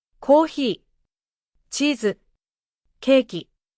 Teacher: Each long vowel is held slightly longer, but without stress or emphasis. Shortening these vowels changes the word. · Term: long vowels